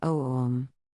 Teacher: Others would advise Om is in fact pronounced from the sounds AU, OM, that meaning, the first half is in fact longer than the second, advising to sound the vowel O longer than the closing M, becoming O-om.